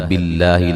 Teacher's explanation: لفظ اللہ کو باریک پڑھیں گے، اس سے پہلے زیر ہے اور یہ مد اصلی ہے۔